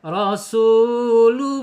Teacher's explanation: Itu ketika ada tanwin ya ee menghadapi huruf ba maka harus dibaca iqlab jadi mingkem bibirnya